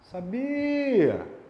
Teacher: você sabe, por exemplo, que a sílaba mais forte é a do meio